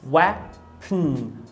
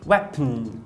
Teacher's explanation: Eu percebo que vai direto do P para o N. Em inglês é possível que o N forme o núcleo de uma sílaba, ou seja, ele seja silábico. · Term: N silábico